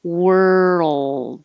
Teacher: the l and d are made in the same place so you have to hold it all and make the l noise a little longer so we can hear the l · As you move from the R to the L, keep your voice going, and that's what makes the roll noise.